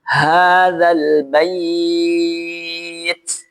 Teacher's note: Pastikan keluarkan anginnya sedikit karena huruf ta ini memiliki sifat hams